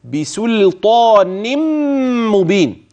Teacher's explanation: استحاله اذا هذا التشديد مبني على ايه على ان النون اعني نون التنوين في كلمه بسلطان ادغمت في الميم فيصير النطق بميم مشدده